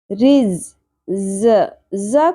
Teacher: ز کو شدت سے پڑھتے ہیں سیٹی کے ساتھ